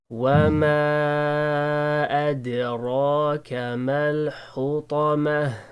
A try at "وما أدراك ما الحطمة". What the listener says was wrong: Mal, also the meme should be more light. الحطمة.